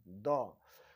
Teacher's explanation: द का उच्चारण स्थान दंत है और आप लोग ये भी जानिए कि इसको हम द को हम दंत वर्ण भी कहते हैं, दंत वर्ण भी कहा जाता है।